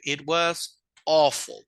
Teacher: porque en español nosotros leemos todas las letras en inglés no la a y la u tienen un sonido que es el sonido de o como que si fuera un bostezo medio abierto